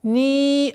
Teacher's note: долгота в размере 4 огласовок кесры.